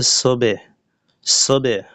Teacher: বাকে কলকলা বা প্রতিধ্বনি করে পড়ার সময় নিচের দিকে হালকা ধাক্কা দিতে হবে।